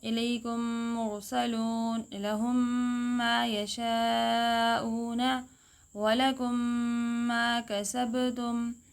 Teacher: میم کو میم سے ملائیں گے، مشدد پڑھیں گے اور غنہ بھی کریں گے · جب میم ساکن کے بعد دوبارہ حرف میم آ جائے تو ادغام ہوگا، یعنی کہ میم ساکن کو دوسرے میم میں ملا کے مشدد پڑھیں گے، ادغام کریں گے